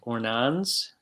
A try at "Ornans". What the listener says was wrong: No S, Ornans. You don't say the S.